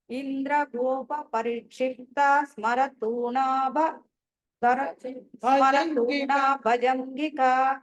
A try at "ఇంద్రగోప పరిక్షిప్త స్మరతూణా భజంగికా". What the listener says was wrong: మీరు క్షిప్త దగ్గర బ్రేక్ తీసుకున్న తా అని దీర్ఘం పలకూడదు, క్షిప్త. సో ఎలా అంటే ఇంద్రగోప పరిక్షిప్త స్మరతూణా భజంగికా. తా దీర్ఘం వస్తుంది, త త అనాలి. త అంతే. తా అనగానే మీరు దీర్ఘం అయిపోతుంది. యూజువల్లీ ఏమవుతుందంటే మనం పాదానికి చివరి కానీ లేకపోతే లైన్ చివరి కానీ మనం ఆపుతాం కాబట్టి అది దీర్ఘంలోకి వెళ్ళిపోతుంది. ఆ దీర్ఘంలోకి వెళ్ళకూడదు, బ్రేక్ చేస్తుంది. బ్రేక్ చేయకూడదు కాబట్టి ఒకటే నామంగా పలకాలి. ఇంద్రగోప పరిక్షిప్త స్మరతూణా భజంగికా.